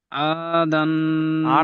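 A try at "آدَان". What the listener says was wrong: টানেন, আইন আলিফ জাবার এটা তো আলিফ মাদ্দা টান হয়, আলিফের ডান দিকে জাবার হলে আলিফ মাদ্দা টান হয়।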